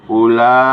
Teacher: Pada lafaz ulaika terdapat mat wajib mutasil karena mat asli bertemu dengan huruf hamzah dalam satu kata. Cara membacanya dipanjangkan menjadi 4-5 harakat